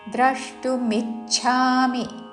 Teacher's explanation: ద్రష్టు ద్రా మీద ఆఘాత